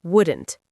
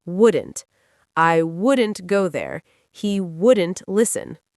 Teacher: You almost swallow the vowel.